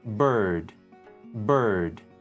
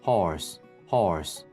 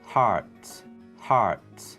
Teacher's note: American English is a rhotic language, meaning the R as in car is noticeably pronounced.